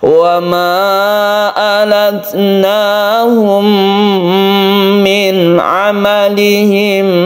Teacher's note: kita berhenti di sini berhenti biasa tapi kalau terus maka berlaku mim bertemu dengan mim yang kita sebut Idgham Mimi dan kita panjangkan karena ini membentuk tasydid mim sehingga dibaca gunah